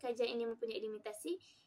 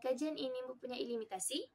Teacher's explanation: Tetapi apabila kita lihat dari aspek keutuhan fonologi, ayat ini boleh kedengaran seperti ayat tanya apabila kita meninggi rendahkan tekanan suara dan nada suara kita